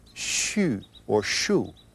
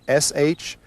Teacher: the specific sound for the liver is sh with a hint of a u at the end